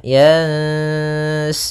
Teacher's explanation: suara nunnya disamarkan ke huruf sin, sambil ditahan ikhfanya atau gunnahnya